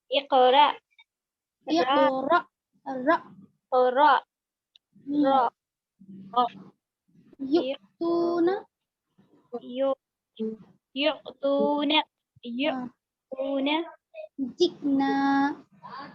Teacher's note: हमजा साकिन से ऊपर झटका होता है